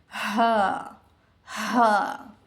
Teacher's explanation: हम जब हम ह का मखरज निकाल रहे हैं तो हमारे सीने से इसकी आवाज आ रही है।